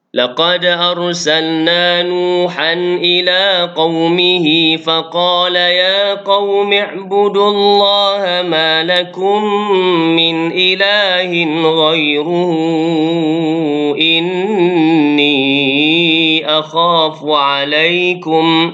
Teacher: mad silah tawilah dan bacaan dia panjang 4 atau 5 harakat, sama dengan bacaan mad jaiz munfasil.